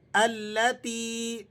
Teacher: تا یا زیر تی ہے تو آپ نے اسے کھینچ کر پڑھنا ہے 1 الف کے برابر